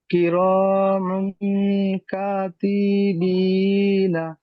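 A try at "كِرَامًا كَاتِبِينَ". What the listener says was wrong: এই কাটা টান হবে, বুঝতে পারলেন, আলিফ মাদ্দা রয়েছে। কির হ্যাঁ, আমি একবার বলে দিই। কিরমান কাতিবিনা।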